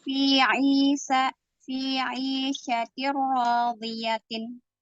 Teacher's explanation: Idghamnya di tanwin kasroh ketemu ro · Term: Idgham bila gunnah